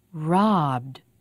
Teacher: here are some verbs that end with a voiced sound and when we add the idi ending we say the ending with voice also so it sounds like d